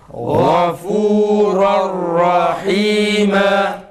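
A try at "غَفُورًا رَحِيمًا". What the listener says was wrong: Yalnız ra'da acele etmeden Gafuran rahima. Tok sesle. İzleyici kardeşlerimize düşen ise Gafuran rahima ile Gafuran rahima telaffuzları arasındaki fark etmektir.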